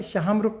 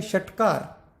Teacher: दूसरा श है षटकार, जो क्रिकेट का लगता है श, इसमें रेट्रोफ्लेक्स और पीछे जाती है जिह्वा। तो एक श में हवा आगे चलती है, एक में श के साथ रेट्रोफ्लेक्स एक्शन है।